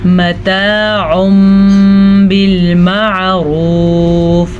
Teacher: متاع بالمعروف، یہاں پہ ہمارے پاس ہے تنوین، نون ساکن یا تنوین کے بعد حرف با آ جائے تو نون ساکن یا تنوین کو اس چھوٹے سے میم میں بدل دیتے ہیں، ٹھیک ہے، اس کو کہتے ہیں اقلاب کا قاعدہ، تو ہم اس کو کیا پڑھیں گے، متاع بالمعروف۔